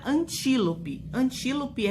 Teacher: sílabas seguintes a sílaba tônica então ela está última penúltima antepenúltima sílaba tônica estando na antepenúltima sílaba é proparoxítona